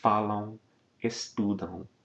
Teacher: Remember that final form, falam, estudam, the AM in the spelling really signifies a nasal diphthong.